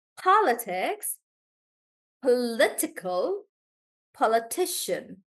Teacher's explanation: as the root word keeps getting bigger the stress also starts moving towards the back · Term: shifting pattern of syllable stress